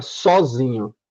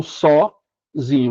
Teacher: A sílaba tônica é zim, mas você tem a sílaba subtônica, que é o só.